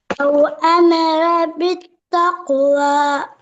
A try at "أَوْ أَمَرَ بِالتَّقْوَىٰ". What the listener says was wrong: أمر இழுக்கப்படாது. பிளவா முக்கியம், பிளவிடப்படாது, விட்டா பிரச்சனை.